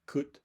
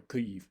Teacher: If you try to keep that tongue back, like where it would be for ku, and say kut, you're going to get more of a barred I vowel right after it